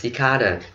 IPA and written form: sɪˈkɑːdə (cicada)